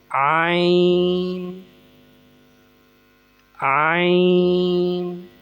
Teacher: عین، حلق کے درمیان والے حصے سے